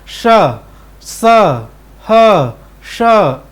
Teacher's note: मैं श का उच्चारण करूं, चाहे स का उच्चारण करूं, चाहे श का उच्चारण करूं, ह का उच्चारण करूं, तो हवा जो है वो घर्षण के साथ बाहर निकल रही है, ठीक है। जीवा श, घर्षण हो रहा है मुख के अवयव में।